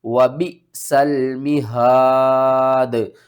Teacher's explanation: last میں دال کے اوپر آپ نے قلقلہ کرنا ہے